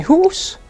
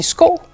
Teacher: der er for eksempel stød på i i bil og der er stød i u i hus og der er stød på o i sko